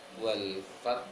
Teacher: di ujung ayat pertama ta-nya disukunkan, ha-nya juga tetap dibaca anginnya